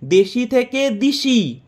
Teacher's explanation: রাঢ়ীতে স্বরসঙ্গতির ফলে শব্দের মধ্যে পাশাপাশি বা কাছাকাছি অবস্থিত বিষম স্বরধ্বনি সম স্বরধ্বনিতে পরিবর্তন হয়ে গেছে